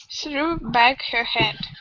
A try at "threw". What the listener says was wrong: So here you went to the T. You said true. Instead of true, tongue between your teeth. Through.